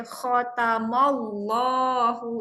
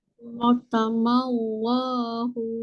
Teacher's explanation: Antara lam dan ha tu anda kena baca panjang sikit. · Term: alif tersorok